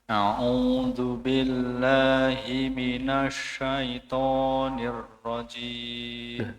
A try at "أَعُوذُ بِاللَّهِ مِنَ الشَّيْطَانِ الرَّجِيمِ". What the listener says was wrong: Nah, berharokat kasroh itu tadi. Jadi, kasroh, huruf yang berharokat kasroh itu tidak keluar dari hidung. Tidak keluar dari hidung. Jadi, syaiton, bukan syaiton. Ditutup, Pak, coba. Hidungnya.